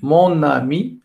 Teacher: J'ai prononcé mon, et ami, donc j'ai ajouté un autre ne. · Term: consonnes de liaison